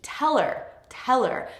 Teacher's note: So the verb gets stressed, the object gets reduced.